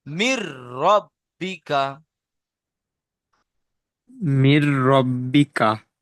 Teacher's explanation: তাই নুন সাকিনকে বিনা গুন্নায় তাড়াতাড়ি পড়তে হবে।